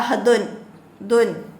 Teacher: ദാലിൻ്റെ മഹ്റജ് പറയുന്നത്. നാവിൻ്റെ തലയും മേലെ മുൻപല്ലുകളുടെ മുരടുമാണ്.